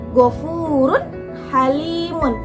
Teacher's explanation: Kalau misalnya kita ambil un, ketika un bertemu dengan ha, itu dibacanya tetap jelas ghafurun halimun. Jadi runnya itu tetap jelas ketika bertemu dengan ha ya. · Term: izhar